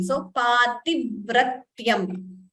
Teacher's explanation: Please note the dvitvam. The v is doubling, the t is also doubling.